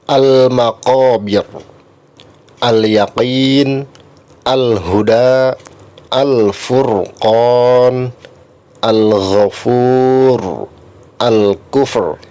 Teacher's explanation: Cirinya alif lam komariah itu bunyi huruf lamnya al itu dibaca jelas. Jadi huruf lamnya terdengar jelas